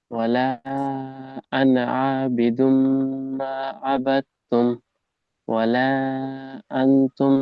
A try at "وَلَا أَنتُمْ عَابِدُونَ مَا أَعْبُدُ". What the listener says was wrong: নুনের গুণনা ছেড়ে যাচ্ছে এখানে, ওয়ালা আন গুণনা ছেড়ে যাচ্ছে।